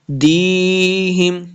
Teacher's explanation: وَتُكَلِّمُنَا أَيْدِيهِمْ، آئی کو لمبا نہیں کریں گے، حمزہ زبیہ ای لمبا نہیں کریں گے. دیہم، دی یا مد ہے، اس کو دو حرکات ہم نے لمبا کر کے پڑھنا ہے